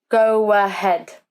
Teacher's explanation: So we use the W as a linking sound if the first word ends with O or U. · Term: W sound